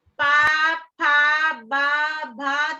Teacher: तो आप देखेंगे ओठ एक दूसरे में मिल रहे हैं